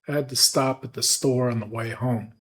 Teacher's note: you can clearly hear the stress on the content words stop, store, and home.